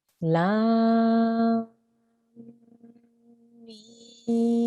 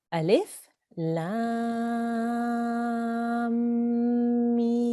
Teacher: That means we need to join this lam to the mim, and the mim also has a mud on the top. So we have to elongate the mim sound as well for another 4 to 6 seconds